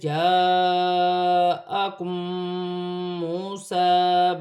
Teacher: میم ساکن کے بعد میم مشدد آ رہی ہے، دونوں کو ملا کر غنے کے ساتھ ادا کیا جائے گا